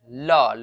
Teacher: ल बोलिएगा तो आपका जो जीभ है वह पहले दांत में सटेगा और फिर पीछे जाएगा। ल यानी दंत में सट रहा है, आगे देखिएगा कि वह दांत में आपका सटेगा।